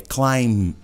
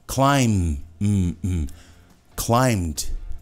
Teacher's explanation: Climb, a gente não acaba com o B. É climb, não é B.